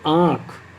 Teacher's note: इसमें मुख से भी इसको बोलते आँख, तो मुख का भी प्रयोग हो रहा है आ में और नाक का भी प्रयोग हो रहा है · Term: अनुनासिक